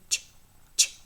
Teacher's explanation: the voiceless post-alveolar affricate